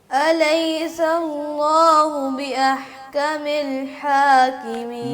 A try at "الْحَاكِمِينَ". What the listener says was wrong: میں نہیں، می زیر ہے نا، تو اس کو مجہول نہ کریں، میں نہ کہیں بلکہ می،